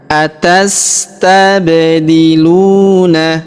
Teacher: Q atastabdiluna. Perhatikan huruf ba berharakat sukun maka kita pantulkan · Huruf ba kita pantulkan atau kita qalqalahkan ya.